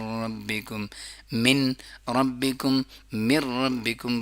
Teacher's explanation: इदगाम करते हैं लेकिन नाक की आवाज उसमें नहीं होती है · یعنی کہ ادغام کرتے ہیں لیکن ناک کی آواز اس میں نہیں ہوتی ہے ، جیسے من لدن اور من ربکم، آگے پڑھتے ہیں من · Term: ادغام بلا غنہ